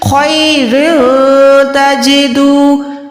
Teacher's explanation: را دو زیر کے بعد تا ہے تو اکفا کریں گے، اکفا یعنی چھپائیں گے